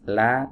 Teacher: makhrajnya ada di sisi lidah bagian depan, ya, dibaca tipis. La, jangan lo. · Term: huruf lam